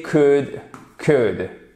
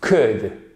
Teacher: vous ne prononcez pas le L